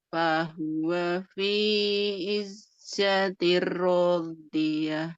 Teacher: ini i-nya panjang, kemudian ro-nya juga panjang ya